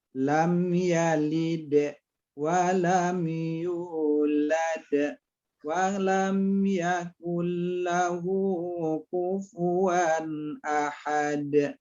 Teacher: Tapi kalau sukunnya karena wakaf atau karena memang kita wakaf atau memang sudah berhenti di ujung ayat, maka qalqalahnya qalqalah kubro atau besar, pantulannya bunyi qalqalahnya lebih jelas